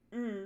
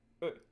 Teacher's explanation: Let's do the U umlaut first. Compare the long tense sound uh to the short lax sound uh.